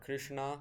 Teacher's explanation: with an rotic r and retroflex Sh and the retroflex N